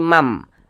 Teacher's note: Jangan dibaca man, tapi mam. Masuk ke huruf mim. · jadi bunyi tanwin ini dimasukkan ke huruf mim. Maka dibaca ayyamam. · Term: idgham bi gunnah